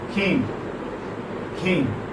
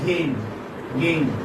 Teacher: K is voiceless and G is voiced.